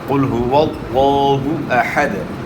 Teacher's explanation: اس لیے موٹا کرنا ہے کہ لفظ اللہ کلام سے پہلے والے حرف کے اوپر زبر ہے، تو اس لیے لفظ اللہ کلام موٹا ادا ہوگا۔ قل هو اللہ احد، اور پیش کو جو ہے نا کھینچنا نہیں، ہاں کہ وہ پیش ہے اس کو آپ نے نہیں کھینچنا، یعنی اس طرح نہیں پڑھنا قل هو اللہ احد نہیں پڑھنا، ہاں کے اوپر پیش جو ہے اس کو کھینچنا نہیں۔